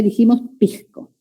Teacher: Debilitamiento de la S como una J suave